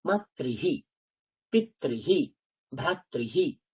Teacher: রিকারের পরে যখন বিসর্গ আসছে তখন তার উচ্চারণ হয় হি